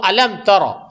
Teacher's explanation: یہ را کو موٹا کریں گے کیونکہ را پہ فتحہ ہے، زبر ہے